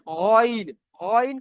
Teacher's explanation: কন্ঠনালীর শেষ ভাগ হতে এই গন খ উচ্চারণ। দেখেন গন গন করলে একটা গড়গড়া মতন আওয়াজ আসছে না।